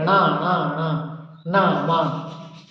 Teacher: ये तीनों ना नाव मा ये नाक की सहायता से बोले जाते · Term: नास